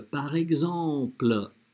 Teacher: «Эм» читается как «а» носовое